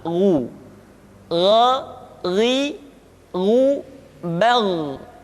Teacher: Ketika dhammah, baru bibir kita dimonyongkan sehingga keluar vokal u dengan sempurna.